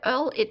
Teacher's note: I still cut off the R.